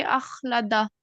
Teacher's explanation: इसको सिर्फ खा को मोटा पढ़ेंगे